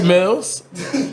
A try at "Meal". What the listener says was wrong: Meal. Meal, yeah, like a meal.